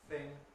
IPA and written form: θɪŋ (thing)